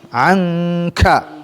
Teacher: Dengung 3 ya, karena al khayshum harus diberikan rongga hidungnya.